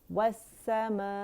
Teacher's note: ای جو ہے اقص الحلق سے ادا ہوگا کیونکہ یہ حمزہ قطع ہے